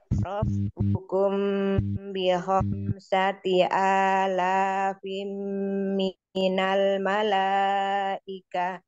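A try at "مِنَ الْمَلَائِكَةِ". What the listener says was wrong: Minal mala, mala, lainnya tipisin.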